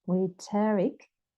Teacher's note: so the O is like a schwa